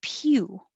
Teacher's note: your tongue starts very high like you're going to say you